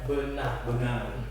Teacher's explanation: Tekanannya ada di na, gitu ya.